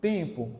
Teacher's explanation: o som se fundiu com o em